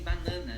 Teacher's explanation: são 3 As aí diferentes, que não é bem o schwa o último